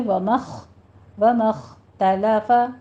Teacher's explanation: تا باریک رہے گی، تا کو طا نہیں بنانا، ومخ خا پر رہے گی، آگے تا باریک رہے گی۔